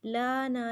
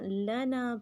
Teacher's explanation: داخل کریں گے، سخر لنا لانا نہیں پڑھنا، لنا پڑھنا ہے، لام کو لمبا نہیں کرنا، نا کو لمبا کرنا ہے